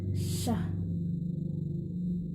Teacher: The place of articulation is palato-alveolar. The manner of articulation is fricative. The sh sound include voiceless.